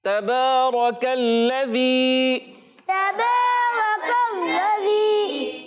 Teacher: تا پر زبر ہے، بغیر کھینچے ادا کرنا ہے، کیونکہ حرکات کو بغیر کھینچے بغیر جھٹکا دیے ادا کرتے ہیں، اور با پر کھڑا زبر ہے اور اس کو ایک الف کھینچنا ہے